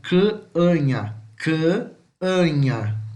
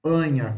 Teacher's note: Bota a língua no céu da boca e fala canha, com som de U, tá? Grave, gutural